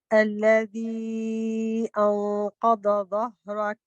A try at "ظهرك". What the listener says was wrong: So the ha needs to be long. ظهرك.